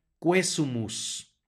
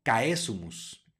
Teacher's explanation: la u suena y el diptongo se pronuncia como e